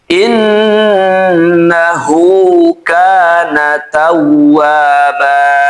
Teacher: Nun tasdid dibaca ghunah.